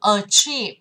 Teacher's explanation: âm thứ hai là âm dài, nên trọng âm sẽ nhấn vào âm thứ hai